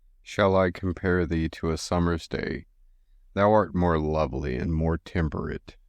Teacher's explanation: constructed with 10 syllables following an iambic pentameter pattern this means the Rhythm alternates between unstressed and stressed syllables